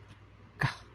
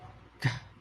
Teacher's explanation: Yang pertama ada K dan G. Ini ada unsur bunyi hambatannya seperti ada tambahan huruf H di belakangnya. seperti gini bunyinya kah.